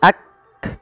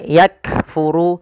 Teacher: Cara membacanya yaitu bacaan syiddahnya dulu, yaitu kaf itu ditahan suaranya ak, baru dikasih hamas. Hamas itu mengalirnya nafas. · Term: sifat syiddah dan sifat hamas